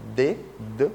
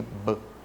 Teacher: o D é um fonema linguodental, você põe a língua nos dentes. O B é bilabial